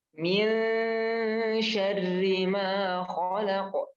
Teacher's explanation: karena ikhfa itu selagi dia samar juga dia ada dengungnya · Cara bacanya ya harus samar, ya samar dan ada dengung di situ.